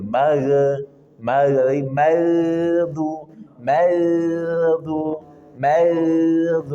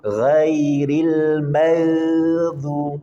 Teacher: huruf gha punya sifat rakhawah mengalir. Maka ketika sukun di magdu alirkan jangan ditahan. Kalau ditahan dia akan memantul.